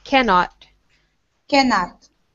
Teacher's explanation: On the word cannot, for two things, make sure can is strong. And also, when you have the end, it ends with a T, but when we have a word that ends in a T, we make the T very, very soft.